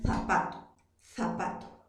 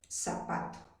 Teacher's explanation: en Perú se produce el fenómeno del ceseo, la confusión de la Z por la S.